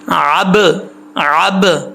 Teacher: با میں کلکلا ہے، یہ حروف کلکلا میں سے ہے، ٹھیک، کلکلا ضرور ہونا چاہیے لیکن ایسا نہ ہو کہ با کے اوپر زبر پڑ جائے ، عب، عب، عین کو پہلے کلیئر کریں، عب، عب دن